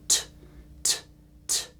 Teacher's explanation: This is voiceless. So on your throat, if you put your fingers and go T, T, T, no vibration, right?